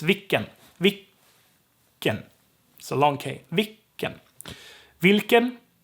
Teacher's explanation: all is short right the syllable needs to be long so if l gets dropped the k has to be extended so it's vicken wilken the l is long but that's dropped